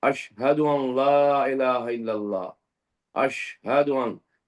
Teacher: یہ زبان کا بیچ کا حصہ شین ادا کرتے ہوئے ہمیں اوپر کے تالو کے حصے سے لگائیں گے